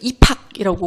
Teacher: 받침 비읍이 히을 만나 피읍으로 축약되고 있는 겁니다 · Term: 거센 소리 되기